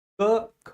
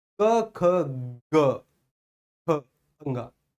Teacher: उच्चारित करो, पहले बोलो, पहले का खा को बोलो, और जैसे ही गा को बोलने का आप प्रयास करोगे उससे पहले हल्का सा वाइब्रेशन महसूस करो स्वर तंत्रियों में